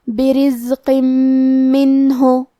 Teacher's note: یہاں حکم ہے ادغام بغنہ، تو ہم یہ حکم کو غنہ اور تشدید کے ساتھ ادا کریں گے۔